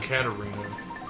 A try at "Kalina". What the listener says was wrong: No, it's Kalina. There was no R.